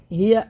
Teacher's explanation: ہا کو سینے سے نکالنا ہے